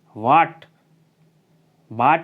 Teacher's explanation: ठीक है ना, आ देखते हैं, यह अंग्रेजी से लिया गया है, इसका उच्चारण आ और ओ के मध्य से होता है। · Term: आगत मात्रा